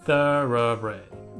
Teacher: まずサラブレッドって完全に▁S▁の音なので、S▁じゃなくて、th,▁th▁の音ですね 。を意識して、thoroughbred。で、ここの▁R▁の発音なんですけど、これは、さっきの、いわゆるこのアクセントが来た、ね、re,▁re▁っていう強い▁R▁の音に対して、ここアクセント来てないので、強調が来てないとこの▁R▁の発音っていうのは、いわゆる、retroflex▁といって、まあ、弱い▁R▁の音になるんですよ。この▁re,▁re▁っていう強い音ではなくて、re,▁re,▁re▁っていう若干このね、下の巻きがこう弱いというか、もう若干このね